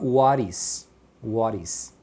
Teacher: E o T emenda. Quando o T emenda no meio de vogais, eles pronunciam como se fosse um R.